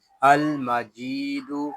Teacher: جیم کو ہم ایک الف تک کھینچ کر پڑھیں گے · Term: مدہ